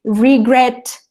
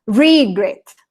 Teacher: Entonces, nos dice que para estos verbos regulares que tienen más de una sílaba, o sea, que no es, por ejemplo, plan, sino que es regret, que tiene dos sílabas, y la última sílaba es acentuada, o sea, por ejemplo, que tiene fuerza en la última sílaba